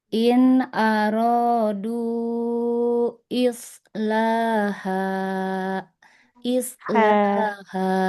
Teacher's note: Huruf H-nya di tengah tenggorokan.